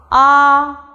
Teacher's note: while pronouncing ah the tongue remains at its lowest position and the position of the tip of the tongue remains neither towards the front or towards the back it remains in the middle position and the lips are not rounded · to the maximum possible extent for example ah while pronouncing ah the tongue remains at its lowest position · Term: simple final ah